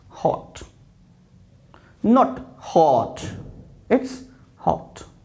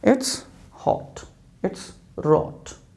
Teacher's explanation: Next one is o with slight lip rounding